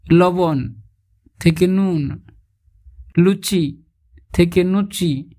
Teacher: ল ধ্বনিটি কোথাও কোথাও দন্তন্য রূপে উচ্চারিত হয়, যেমন লবণ থেকে নুন, লুচি থেকে নুচি ইত্যাদি।